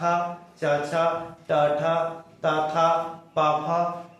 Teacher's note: अघोष। कंपन नहीं होंगे अघोष में